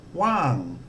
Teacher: So low class consonant, the first tone mark, and again it's falling.